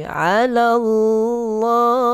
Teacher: Kalimah Allah, lafzul jalalah itu kita baca dengan tebal sebab apa? Sebelum dia bari di atas.